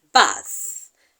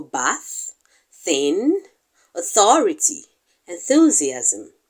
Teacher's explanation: It is a dental fricative. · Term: voiceless dental fricative